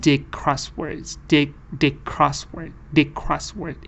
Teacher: So dig crossword, because the next word is starting with the k sound. The speaker changed the d sound to the g sound.